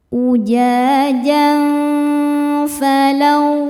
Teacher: Berikutnya ada hukum ikhfa hakiki awsat karena tanwin fathah menghadapi huruf fa. Cara bacanya tanwin disamarkan menuju fa disertai dengung. Dengung dan kesamarannya sama besar. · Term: ikhfa hakiki ausat